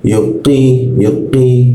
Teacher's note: Jadi bacanya adalah yukqi yukqi napasnya tidak keluar · Jadi bacanya adalah yuqi, napasnya tidak keluar. Kalau ki itu memakai ka, kalau keluar namanya ka, tapi kalau qa tidak keluar napasnya, qi, ya.